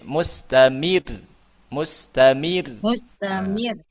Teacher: rnya ro tipis karena sebelumnya harakatnya kasrah